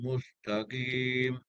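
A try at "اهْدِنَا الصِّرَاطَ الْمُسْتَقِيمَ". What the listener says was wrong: Cuma sifat tebal kurang lah. Sifat dia qawiyah. Qawiyah ni suara kuat. Padu. Tak boleh lemahkan. Dia Haji kurang sedikit tadi. Ada ketebalan dia kurang. Bagi tebal lagi je. Bagi padu. Ihdinas. Padu punya dia. Ihdinas.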